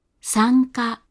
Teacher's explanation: It's a voiced velar nasal before K and G